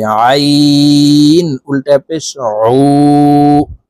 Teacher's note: আইন হরফের উচ্চারণ হলকের মধ্যখান থেকে চাপ দিয়ে পড়তে হবে।